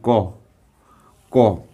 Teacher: আমরা যখন ক বলছি কিন্তু শেষে দেখো অ উচ্চারণ করছি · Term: মুক্তদল